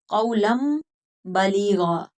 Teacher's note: दो ज़बर की तनवीन आई और आगे बा आ गया तो कौलन नहीं पढ़ेंगे, कौलम। ठीक है, मीम के साथ बदल कर पढ़ेंगे। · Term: क़ल्ब